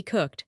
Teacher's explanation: Cook ends in k unvoiced. So ed is t